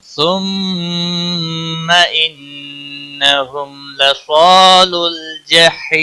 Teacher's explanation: ثم میم مشدد اور نون مشدد دونوں جگہوں پہ گنہ ہوگا. گنہ کی مقدار 1 الف کے برابر ہوتی ہے.